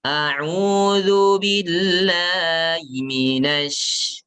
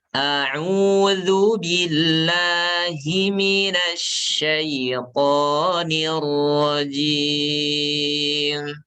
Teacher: yang harus diperhatikan, hi-nya diperjelas. Alirkan nafasnya. Walaupun nggak terlalu jelas seperti ha ya.